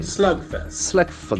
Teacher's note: The accent falls in the first syllable.